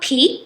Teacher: The word peak, we have the aspiration p